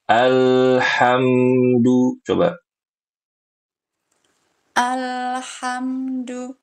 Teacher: Huruf lam ketika sukun itu enggak boleh memantul.